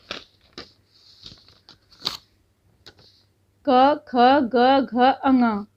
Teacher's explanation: क से लेके माँ तक के जो वर्ण हैं उनको हम बोलते हैं कंठ से।